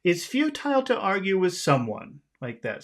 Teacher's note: uh phrases in English usually start high okay so we'll start we're going to start our phrase on a high note the music will be high in the beginning but will end low